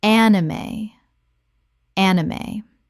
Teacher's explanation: Correct pronunciation, anime. Three syllables with the E pronounced at the end.